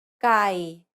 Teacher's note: this is an unaspirated k sound it's like the k in ski or skip similar to the previous unaspirated p and t sounds you want